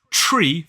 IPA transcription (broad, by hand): ʧriː